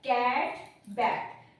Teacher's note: यहाँ पे आ साउंड ना प्रोड्यूस करते हुए ये ए की साउंड प्रोड्यूस कर रहा है।